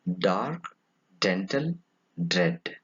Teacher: It is a voiced alveolar.